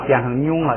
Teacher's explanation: 了，一加上加字或者前加字，这个4个鼻音变成平调，规则就学完了。后边还有3课是讲那个前加字，跟这个上加字规则呀完全一样，所以规则就没有新的了，就是一个熟悉单词练习读的问题了。咱们现在来练习啊。先看这个拿呀拿麻这4个鼻音，这个一加上加字之后呢变成平调，咱们前头那个咱们也每一个都读一下啊。拿哎，就这样，就是调变一下就行了，变成平调。你看下边也是一加上加字，呀就变成了呀，后边这个注意，它一变平，然后上边就变成了捏，然后后边它呢是既变调又变音的那个要拉下来，所以就变成了捏，后边这个啊妞， 因为那个呀变成平调了，所以后边整个都平了，变成妞了，就不是牛了